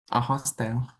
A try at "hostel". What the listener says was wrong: Hostel. Hostel, not hotel. Hostel.